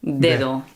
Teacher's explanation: It's got a sound like a D and a th mixed together, like a th. Dedo. Yeah, Dedo.